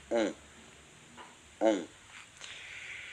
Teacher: Ici, il s'agit de la voyelle nasale on. C'est un peu comme un O, mais ça vibre plus vers le nez.